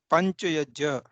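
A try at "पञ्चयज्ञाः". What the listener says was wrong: Yeah, not pancha yajna, pancha yajnyaha. You have to get the nasal after the jakara. see, this is not jakara. This is jakara plus nyakara. Jnya. Little attack of jakara ending with the nasal nyakara.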